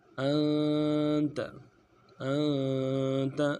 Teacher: हमज़ा को नून साकिन के साथ मिलाना है, नून साकिन में गुन्ना करेंगे